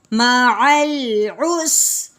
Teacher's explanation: یہ سین ہے، اس کو ہلانا نہیں ہے کیونکہ یہ حروف قلقلہ نہیں ہے. عس نہیں کر دینا، معل ایسے بھی نہیں کرنا.